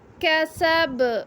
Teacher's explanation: کاف کو ہم باریک پڑھیں گے، کسب، با پہ ہم قلقلہ کریں گے۔